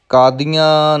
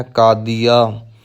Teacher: ਕਾਦੀਆਂ ਨਹੀਂ ਕਹਿਣਾ, ਬਿਨਾਂ ਬਿੰਦੀ ਤੋਂ ਉਚਾਰਨ ਕਰਨਾ ਹੈ ਕਾਦੀਆ